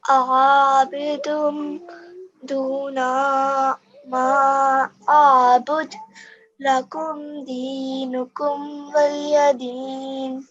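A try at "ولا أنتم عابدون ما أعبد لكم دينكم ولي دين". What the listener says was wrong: So you need to practice on your ayn sounds.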